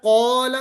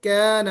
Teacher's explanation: कौला यही काफ, काफ है, और अलिफ है, उससे पहले काफ है, तो हरफ इस्तिला है, तो हम इसको कौला मोटा पढ़ेंगे और ये काना बारीक पढ़ेंगे